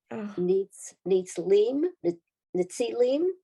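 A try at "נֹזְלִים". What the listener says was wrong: That's a Zion, Nozilim.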